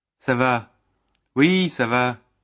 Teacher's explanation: note the falling intonation for both